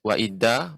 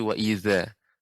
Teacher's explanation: ujung lidah dengan gigi seri atas za